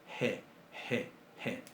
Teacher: Como una exhalación. Es básicamente la H del inglés. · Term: exhalación suave